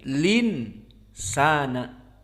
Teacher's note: dan masuk kepada Nun karena Nun asalnya memang sukun asalnya insana hamzahnya dihilangkan dan harokat Hamzah pindah ke lam